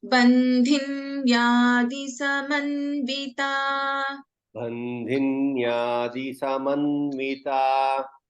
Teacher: it is not bandhinyadi. There is no dirgha in bandhinyadi. It is di.